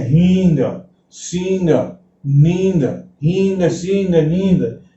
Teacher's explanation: ये न न वाली आवाज न आकर के एक जैसी अनुनासिक ध्वनि निकलती है।